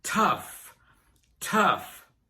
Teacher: The OU is pronounced uh like in fun and sunny and the GH is pronounced like an F